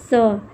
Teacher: यहाँ पे दिया है स का उच्चारण किससे होता है? तो स, इसका उच्चारण दंत से होता है, दंत्य स है